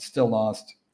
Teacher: still ends in L, lost begins an L sound. So we just push the two words together with one L sound